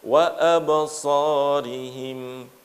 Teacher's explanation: Pada waktu melafalkan wa a, nafasnya ditahan.